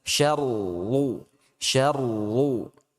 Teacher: di kata syarrul ketika masuk ra tasydid itu dia sudah tebal